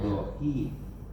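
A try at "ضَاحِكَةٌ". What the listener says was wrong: Do panjang.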